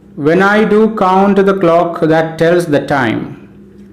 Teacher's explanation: When I forms a pair, do count forms the second pair, the clock forms the 3rd pair, that tells forms the 4th pair, the time forms the 5th pair of syllables. And in the first pair of syllables, when is unstressed, I is stressed. Do count, do is unstressed, count is stressed.